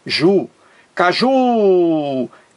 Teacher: A palavra caju. Caju. Duas sílabas. A sílaba mais forte é a última. Ju. Caju é a mais forte. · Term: oxítona